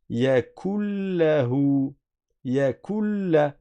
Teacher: Mais le noun est rentré dans le lem. Il a disparu complètement, le noun, dans le lem. C'est pour ça qu'on a une double lem, un double lem. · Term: fusion complète